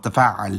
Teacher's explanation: it still has the gemination on the middle consonant, but it also has a ت at the beginning